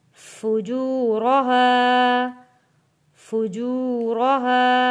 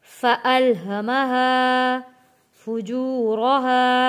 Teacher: واو ساکن سے پہلے پیش ہے، حروف مدہ ہے تو کھینچ کر ہم نے پڑھنا ہے۔